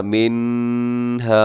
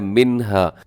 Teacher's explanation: अपने नून साकिन और तनवीन की आवाज़ को ज़ाहिर करके पढ़ना है, उसकी आवाज़ को छुपाना नहीं है नाक में, बल्कि तेज़ी से पढ़ जाना है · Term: इजहार हलकी